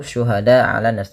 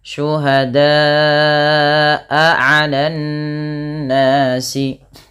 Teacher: Kemudian lafal syuhada'a 'alan nasi, pada lafal da panjangkan bunyi suara huruf da sepanjang 4 atau 5 harakat karena ia termasuk daripada bacaan mad wajib muttasil dan dia tidak boleh kurang, tidak hanya cukup syuhada 'alan nas, tapi dia wajib 4 atau 5 harakat.